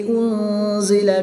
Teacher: نون ساکن کے بعد زا حرف اخفا میں سے ہے تو یہاں پر اخفا ہوگا، یعنی غنہ زمانی کر کے پڑھیں گے۔